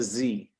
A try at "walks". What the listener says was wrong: That's an S. Walks.